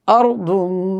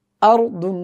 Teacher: হামজা একদম কন্ঠ থেকে উচ্চারিত হবে শক্তভাবে